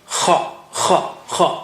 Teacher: And kha comes from upper part of the throat.